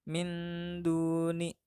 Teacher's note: nunnya dibaca samar menghadapi huruf ikhfa yaitu da